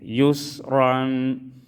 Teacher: را کو پر پڑھیں گے، زبر آئے ہیں